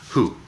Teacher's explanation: La W no suena, es como si fuera H y una U larga